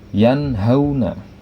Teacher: Di situ ada nun sukun atau nun mati bertemu dengan huruf ha. Maka nun sukunnya dibaca jelas, tidak terpengaruh dengan huruf setelahnya, yaitu huruf ha. Maka dibacanya yanhauna. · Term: izhar, idhar